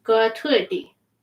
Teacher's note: Make that T a little D.